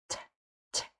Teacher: In English, the t is often aspirated, meaning that air is coming out of your mouth when you're saying t or 10. For example, t t air is coming out.